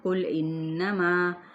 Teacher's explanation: یہاں پہ غنہ کرنا ہے نون مشدد پہ